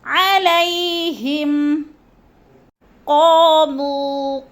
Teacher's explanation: قا جو ہے اس کو بھی لمبا کرنا ہے، الف مدہ ہے، اور مو کو بھی لمبا کرنا ہے۔